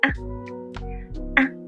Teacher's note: Light tone is very short as well